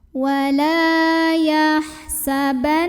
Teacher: huruf lam yang berbaris fathah kita panjangkan 2 harokat saja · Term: mad tabi'i